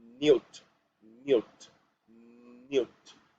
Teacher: in the consonant N when the sound is about to go out of our mouth we join our tongue and our upper teeth